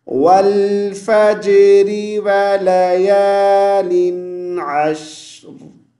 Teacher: शीन को साकिन की हालत में खींचेंगे, अश्र, रा की हल्की सी आवाज़ पैदा हो, क्योंकि हम रा को साकिन कर रहे हैं, तो रा की आवाज़ साकिन की हालत में साफ साफ सुनाई देनी चाहिए